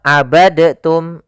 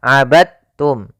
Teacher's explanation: abadtum ya tapi langsung dimasukkan ke ta abadum bukan abadtum ya Meskipun Dal termasuk huruf Qalqalah karena dia memiliki makhraj yang sama dengan Ta Maka diidghamkan dalnya kepada huruf ta